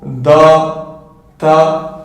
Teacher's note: Ensuite également du bout de la langue, on va retrouver des lettres qui vont venir toucher ici du coup la racine des dents supérieurs